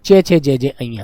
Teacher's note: इसका च वर्ग क्या होता है? संघर्षी व ऊष्मीय होता है पूरा वर्ग